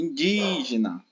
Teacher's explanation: é uma palavra que tem a antepenúltima sílaba tônica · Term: proparoxítona